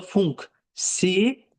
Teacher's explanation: Çünki funksioner tələffüz olunanda funksiyaner. Yəni y artır, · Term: səs artımı